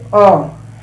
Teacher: अ एकदम बीचों बीच में जीभ का जो प्रयोग होता है, बीच का प्रयोग होता है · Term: मध्य या केंद्रीय स्वर